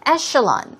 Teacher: That's E-C-H-E-L-O-N, but it's pronounced with an S-H, sh sound.